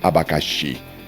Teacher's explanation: a palavra oxítona, abacaxi, ela tem a última sílaba forte, que seria o xi.